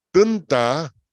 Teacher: tun es la sílaba pesada porque tiene vocal corta, pero termina en N.